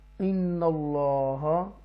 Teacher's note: یہاں تفخیم کر کے اللہ کے نام کو پڑھیں گے، پر پڑھیں گے، بولڈ پڑھیں گے، ڈیپلی پڑھیں گے، اسٹرونگ پڑھیں گے کہ یہ اس سے پہلے زبر آ رہی ہے اس لیے.